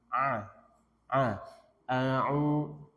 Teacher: Kemudian ain. Wastul halqi, tenggorokan tengah.